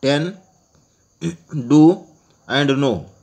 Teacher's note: the tip and blade may make a contact with the teeth ridge to produce the initial consonants in the English words ten, do, and no.